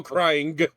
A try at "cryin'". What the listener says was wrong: I was worried. I I heard a G instead of an apostrophe at the end.